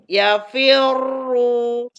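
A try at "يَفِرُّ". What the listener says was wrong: Ya, tipis ya. Tapi tasdidnya kurang, Kalau wakof, tasdidnya juga harus ada, coba gimana?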